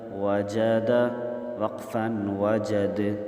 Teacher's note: دال پر قلقلہ کریں گے